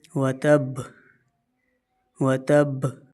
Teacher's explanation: سختی بھی ہو اور با کی ادائیگی کے وقت اس میں ہلکی سی جنبش بھی آ جائے